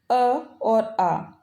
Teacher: कंठ्य स्वर वो होते हैं जो कंठ द्वारा बोले जाते हैं, जैसे अ और आ। अगर हम अ और आ को बोलेंगे तो इनकी जो ध्वनि है वो हमारे कंठ से निकलती है।